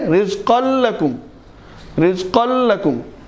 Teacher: بلا غنہ ہونے کی وجہ سے اس کو کھینچا بھی نہیں جا رہا ذرا